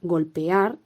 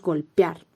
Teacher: En los hiatos, nuevamente, también a veces podemos encontrar pronunciaciones que suenan más a diptongo que a hiato